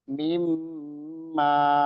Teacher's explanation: nun sukun dimasukkan atau diidghamkan ke dalam mim, ya. Aslinya mim itu nggak bertasdid aslinya, namun karena dua huruf yang dipertemukan, ya, makanya dia dikasih tasdid, ya. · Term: idgham bi gunnah